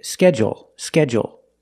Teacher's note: they put the stress only on the first syllable